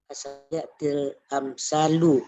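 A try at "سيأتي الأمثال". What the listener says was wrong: Jangan til, sayati.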